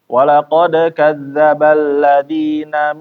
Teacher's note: Kalau misalnya tadi ada bacaan eng ya, setelahnya bertemu dengan huruf-huruf yang tebal, contohnya di sini adalah huruf qof, maka bacaan eng-nya menjadi tebal juga